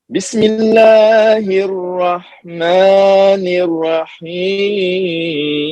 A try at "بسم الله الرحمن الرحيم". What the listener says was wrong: نہیں، را صحیح نہیں نکلی. بسم اللہ الرحمن الرحیم.